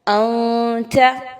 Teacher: کیونکہ میں نے دیکھ لیا کہ نون ساکن کے بعد جو لیٹر ہے وہ تا ہے، اور تا حروف اخفا میں سے ہے۔ میں نے یہاں پر نون کی آواز کو واضح نہیں پڑھنا، مخفی کرنا ہے، ناک میں چھپانا ہے ود غنہ